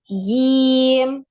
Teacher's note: jimnya jangan sampai ada desisnya. Jangan nirrojim gitu, tapi jim, tidak ada hamesnya ya.